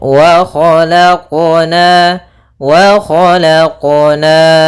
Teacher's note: Harusnya dalam pelafalan qalqalahnya tidak ada tambahan hamzah ataupun saktah. Ya, kan tapi dia langsung saja mengalir.